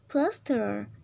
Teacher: Plaster yang P. Nah, ini tuh termasuk voiceless bilabial stop.